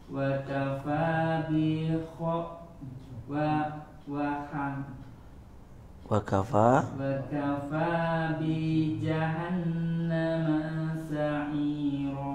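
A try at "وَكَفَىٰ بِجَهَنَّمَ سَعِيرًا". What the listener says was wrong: Hati-hati, B-nya nggak boleh panjang, ma-nya juga boleh panjang. Tinggal ma-nya nih. Nunya dingungnya sempurna. Bi jahannama.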